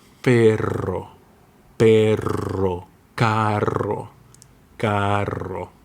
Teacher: this is a strong trill made by vibrating your tongue. So you need more air.